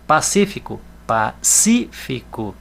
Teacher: Olha o si que é a sílaba acentuada é a sílaba tônica